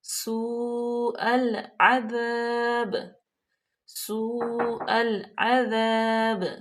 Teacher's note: واو پہ مد متصل ہے تو اس کو ہم 4 الف کے برابر لمبا کریں گے کیونکہ حمزہ اسی کلمے میں ہے۔